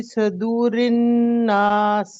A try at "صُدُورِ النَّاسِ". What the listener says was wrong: صدو نہیں ہے، صدورن.